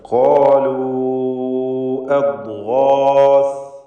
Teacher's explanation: സാക്കിനത്തായ ലാമിന് ഇൽഹാറാണ് ഈ പദത്തിലുള്ളത്. ഖാലു എന്ന് പറയുമ്പോൾ ഖാഫിനും അലിഫിനും തഫ്ഖീം തടിപ്പിച്ച് ഉച്ചരിക്കുക